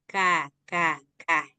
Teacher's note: yaitu sifat istifal mengucapkannya lebih ringan